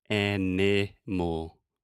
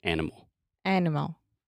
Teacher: the schwa occurs in that unstressed middle sound animal animal yeah no one is saying and mole we're saying